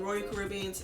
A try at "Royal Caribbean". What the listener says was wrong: Royal Caribbean. royal. You get me? Gotta pronounce more R's. Royal.